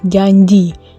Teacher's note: bunyi ini terjadi karena tengah lidah bersentuhan dengan langit-langit keras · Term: mediofalatal